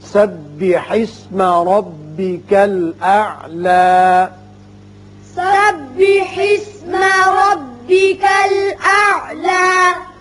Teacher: یہاں وقف کی صورت میں اعلیٰ کھڑا کر کے پڑھیں گے، حالانکہ اوپر زبر آپ کو نظر آتی ہے، لیکن وقف کی صورت میں ایک الف کے برابر آواز اوپر کھینچیں گے۔ وصل کی صورت میں اعلی الذی ہوگا۔